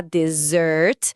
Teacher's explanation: desert com a sílaba tônica forte no final